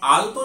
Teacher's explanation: অর্থাৎ ট বর্গের উচ্চারণ স্থান মূর্ধা স্পর্শ করছে এবং আলতো যখন উচ্চারণ করছি তখন এই ল উচ্চারণ করার সময় আমাদের দন্তে কিন্তু স্পর্শ করছে। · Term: আলতর ল